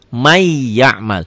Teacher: Ditulisnya man ya'mal, dibacanya jadi may, jadi double y ya. N-nya hilang. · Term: idgham bigunnah